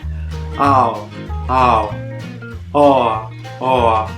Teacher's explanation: Scivola dalla prima alla seconda vocale. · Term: dittonghi